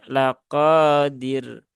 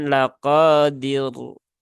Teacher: maka rnya masuk dalam kaidah ro yang tarqiq ya atau ro yang tipis ya